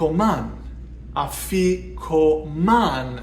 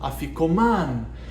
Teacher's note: stressing the last syllable